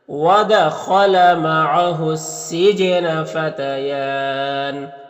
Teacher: فتیان یا میں کھڑا زبر ہے، اور یہاں پر وقف کریں گے تو مد عارض وقفی ہوگا